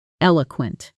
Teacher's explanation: The stress is firmly on the first syllable.